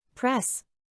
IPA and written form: prɛs (Press)